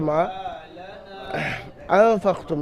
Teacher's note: থেকে 4 আলিফ পরিমাণ টান দিয়ে পড়তে হবে মা আনফাকতুম নুন সাকিনের পরে ফা এসছে হরফে ইখফা থেকে নুন সাকিনকে এক আলিফ পরিমাণ গুন্না সহ পড়তে হবে আনফাকতুম ফাকতুম এখানে ফাকতুম পর্যন্ত আপনার হারাকাতের কায়দা আছে তাড়াতাড়ি পড়বেন